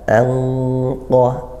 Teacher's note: Bunyi Nun tetap kemudian ke makhrajnya qof langsung seperti itu angqo nah jadi qof itu dipangkal lidah naikkan